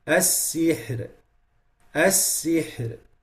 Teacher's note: The ra has to be lowered in the end. Or light.